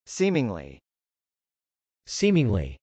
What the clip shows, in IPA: sˈimɪŋli